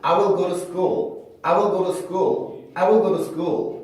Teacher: T 발음을 플랩해서 하는 경우가 굉장히 많습니다